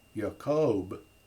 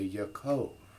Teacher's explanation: referred to in the text the other thing is that when under certain circumstances the B sound takes on a v sound to soften it